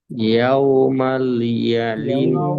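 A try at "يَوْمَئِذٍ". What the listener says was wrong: দেখেন ইয়াউমাল ইয়াউমাল না, ইয়াউমাল আছে, দেখেন এখানে ইয়া ওয়াও জবর ইয়াও মিম জবর মা, ইয়াউমা হামজা জের ই দাল দুজের কি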